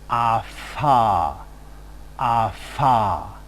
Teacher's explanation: The next place of articulation is the labiodental place of articulation, where we can observe a constriction between the lower lip and the upper teeth. A typical consonant would be ah-fa, ah-fa.